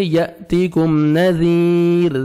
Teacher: ذال کو نرمی سے ادا کر کے 1 سیکنڈ آپ نے کھینچنا ہے